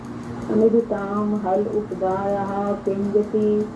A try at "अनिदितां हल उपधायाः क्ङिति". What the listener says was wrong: ये ककार पे मात्रा नहीं है, गिति है, गिति। हाँ, ये ककार पे नहीं है मात्रा, क्योंकि यदि ककार पे मात्रा ये होती तो ये तो पूरा ही ना हो जाता।